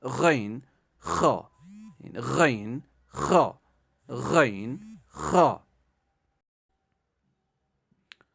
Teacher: غین خا. حلق کے ابتدائی حصے سے ادا ہوتے ہیں. یعنی حلق کا ابتدائی جو یعنی سینے کی طرف جو ابتدائی والا حصہ ہوتا ہے وہاں سے یہ دو حروف نکلتے ہیں.